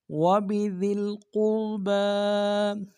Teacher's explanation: کو گونا نہیں ہوگا، قوف کو را کے سامنے لائیں گے، قوف کو موٹا ادا کریں گے، را کو موٹا ادا کریں گے